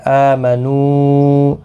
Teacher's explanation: حمزہ کے اوپر کھڑی زبر ہے، ایک الف کی مقدار کے برابر کھینچ کر پڑھیں گے